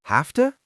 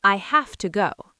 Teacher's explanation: When the word have is followed by the word to, the final v sound in have changes into an f sound and the o in to becomes a soft uh sound.